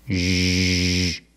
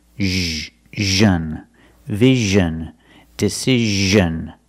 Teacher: It's the same position as sh, like wish and fish, sh, sh. But you make a voice, you make vibration. Make vibration here, zh. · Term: zh sound